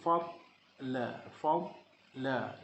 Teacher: Lidah kita akan terus ke geraham untuk menyebut dengan tepat dari sisi sifatnya.